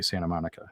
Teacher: You don't even hear the T when I say Santa Monica. Right. It sounds like kind of a sharp N.